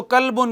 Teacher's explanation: बारीक पढ़ेंगे तो कल्बुन हो जाएगा